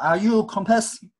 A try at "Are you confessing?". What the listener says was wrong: 오케이.